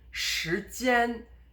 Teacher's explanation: you notice that the 间 is high throughout. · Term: stressed version